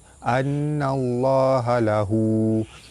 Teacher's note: Nun sabdu wajibul gunnah ditekan dan ditahan serta dengung 2 harakat. Baratta bertemu lam jalalah dibaca tebal.